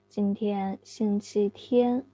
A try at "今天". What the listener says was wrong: 今天, raise the tone, please. Not say 今天. 今天.